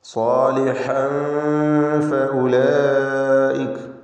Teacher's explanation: സാലിഹൻ, സ്വാദിനും അലിഫിനും തഫ്ഖീം കൊടുക്കണം.